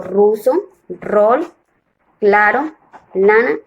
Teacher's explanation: los órganos que intervienen la producción del sonido son la lengua sobre la raíz de los dientes superiores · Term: alveolar, Alveola